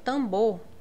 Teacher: esse M ele vai nasalizar a letra A